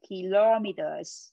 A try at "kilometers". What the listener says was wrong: Nhóm âm thứ hai, kilometer, giờ. Cái Z cuối cùng. Kilometers. Kilometers.